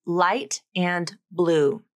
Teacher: For the light L, the tongue tip comes up and touches the alveolar ridge, or the back of the upper teeth, or the tongue tip may also go outside of the mouth, between the upper and lower teeth.